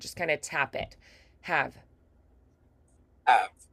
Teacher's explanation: Av is also short. The A is the longest part, and the V is very short. Just kind of tap it.